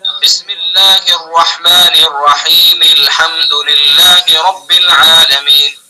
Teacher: حمزہ گر جائے گا اور حمزہ کے بعد والا جو حرف ہے جس کا وصل کر رہے ہیں اس حرف کو اس کے اندر ڈائریکٹ ملا دیں گے · جسے الحمد ہم نے پڑھا ہے الحمدللہ رب العالمین، جبکہ ہم نے یہاں سے شروع کیا، ابتدا الحمد سے کی تو حمزہ پڑھا جائے گا، لیکن اگر ہم بسم اللہ کو اس میں ملا کر پڑھیں گے تو پھر حمزہ کو گرا دیں گے اور لام کے اندر جو بسم اللہ کا میم ہے آخری حرف اس کو اس میں ملا دیں گے۔